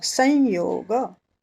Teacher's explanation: स के ऊपर बिंदी, आगे आया योग, योग का य, तो उसका अनुनासिक भी होगा य